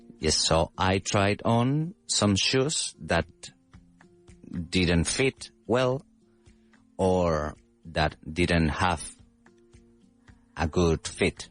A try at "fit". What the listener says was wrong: your pronunciation was good um of fit and not feet.